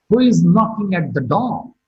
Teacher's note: Similarly, who is knocking at the door? Door is marked with a falling tone.